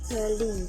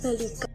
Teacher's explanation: Contoh modifikasi vokal yaitu pada kata balik diucapkan bali. Vokal I diucapkan rendah, akan tetapi ketika mendapatkan sufiks an sehingga menjadi kata balikan, bunyi I berubah menjadi tinggi.